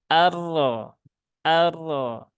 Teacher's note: huruf ro itu dia punya sifat yang namanya attakrir atau bergetar secara berulang-ulang maka getarannya sewajarnya saja